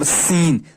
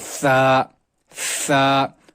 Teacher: سین میں سیٹی نکلتی ہے، سا میں نہیں نکلتی ہے. سا کو زبان کی نوک اور ثنائے اولیاء کے دانتوں کے ساتھ ٹچ کرنا ہے.